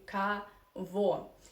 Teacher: When o unstressed, you pronounce as a. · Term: Russian reduction law